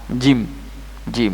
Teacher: makhraj huruf Jim diucapkan dengan cara mengangkat bagian tengah lidah ya Tengah lidah kemudian menekankan bagian tengah lidah ke langit-langit keras